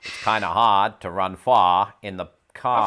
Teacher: The beauty of that kind of old world Bostonian English is that it doesn't adhere to the same rhotic pattern that a lot of American English does, where you pronounce that final R